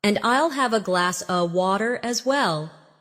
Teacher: In connected speech, glass of sounds like glass a.